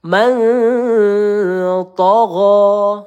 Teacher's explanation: nun sukun bertemu th ya kita panjangkan dua atau tiga harakat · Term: iqfa halq